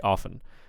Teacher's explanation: the T can be silent